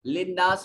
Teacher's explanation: نون مشدد ہے، غنہ واجب ہوگا. آواز کو ناک کے نتنوں میں لے جا کر کچھ دیر گنگنائیں گے